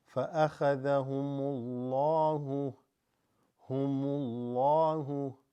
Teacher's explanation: Dhamma or Fatha before Lafzul Jalala, the name of Allah subhanahu wa ta'ala, makes it said with a full mouth